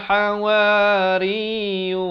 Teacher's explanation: Ra baris bawah bertemu ya bersabdu, nipis dan ditekankan.